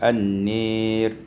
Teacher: dibaca dengan imalatu fathatin nun, imalah fathah nun, wal alif dan alif, sehingga kita baca An-Nir.